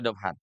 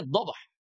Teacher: Jadi dobhan itu dia dibaca panjang kalau wakaf dua harakat